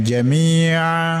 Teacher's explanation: jami mi itu dipanjangkan dua harakat mad asli. Kemudian jamia ketika diwakaf menjadi mad iwat.